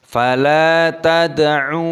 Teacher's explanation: lam alif panjangkan lamnya dua ketukan. Tad'u, talinya qalqalah, sukun dipantulkan tad'u, ainnya dibaca panjang dua ketukan.